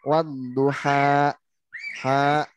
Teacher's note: Kalau digas di ujungnya wadduha ha gitu. Nah, jadi kalau di ujungnya digas ada hamzah. Jadi suaranya ngegas gitu.